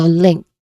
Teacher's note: there's a short e vowel sound here and then you end with a nasal sound ng sound